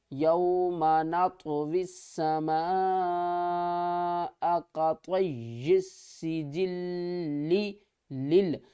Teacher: اکثر لوگ یہاں پر ادائیگی کرنے میں کنفیوز ہو جاتے ہیں، لیل کر جاتے ہیں، لیل۔ پوری تشدید کو کمپلیٹ پڑھنا ہے، اس کے بعد ہم نے دوسرے لام کو پڑھنا ہے